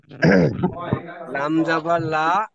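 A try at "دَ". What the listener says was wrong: হ্যাঁ, ভালো করে বলেন ভাই, লাম হলে তাহলে উপরে লম্বা দাঁড়িয়ে থাকতো, ওখানে তো লাম নয়। দাল জবর দা। দাল জবর দা।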